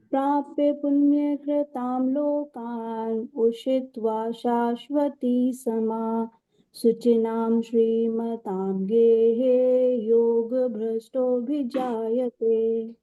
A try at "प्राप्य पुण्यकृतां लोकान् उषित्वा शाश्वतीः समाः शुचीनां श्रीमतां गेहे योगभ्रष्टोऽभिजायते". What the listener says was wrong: आपका मुख्य रूप से उच्चारण में देखिए यहाँ पर शाश्वती ही समाहा, शाश्वती ही समाहा। तो ये जो विसर्ग है इसमें हम एक तरह से सांस को थोड़ा छोड़ते हैं। प्राप्य पुण्यकृतां लोकान्, प्राप्य पुण्यकृतां लोकान् उषित्वा शाश्वती ही समाह, शाश्वती ही समाह।